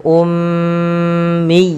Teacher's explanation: tahan suara ya karena ia mim berharakat tasydid dan kita hukumi dengan bacaan gunnah